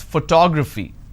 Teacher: how many syllables do i have here four toe grab fee four syllables but in this case i stress on the second syllable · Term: word stress